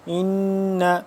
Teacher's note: نون مشدد ہے، اس پہ ہم غنہ کریں گے